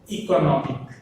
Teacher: If we add suffix to it, then stress shifted to no.